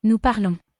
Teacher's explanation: To say we speak, we translate we, which is nous, and then we take the root word and we add ONS onto the end. Remember, the S on the end is silent